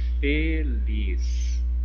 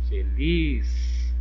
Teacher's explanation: Mais entonação, com mais força, certo? Então o lis é a sílaba tônica e o fe é a sílaba átona.